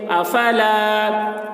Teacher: الف سے پہلے زبر ہے، الف مدہ ہوا، اس لیے الف مدہ کو ایک الف کے برابر کھینچ کر پڑھیں گے